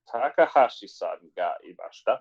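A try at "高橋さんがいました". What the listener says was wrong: There we go.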